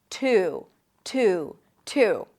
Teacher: you can also drop the Y sound and then just connect the T to the U